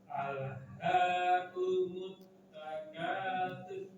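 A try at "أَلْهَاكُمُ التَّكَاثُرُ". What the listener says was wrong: Sur, rohnya tebalkan sur. Coba lagi.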